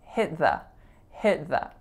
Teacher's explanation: Next, the link between hit and the is important because I'm not saying hit the, I'm saying hit the, hit the. So there's an unreleased T on the word hit. The, I'm saying with a schwa, so there's our reduction.